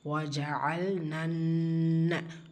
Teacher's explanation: சோ இந்த மத் consider பண்ணப்படாது நம்ம சேர்த்து தான் ஓதுவோம் வஜல் நன்ன நூன் முஷதா குன்னா செஞ்சு ஓதணும்